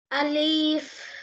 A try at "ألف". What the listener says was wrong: Quickly. আলিফ তাড়াতাড়ি বলতে হয়।